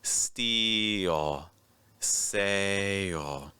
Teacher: After you make the long vowel, it's like the E or the A, you're going to add a second sound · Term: letter L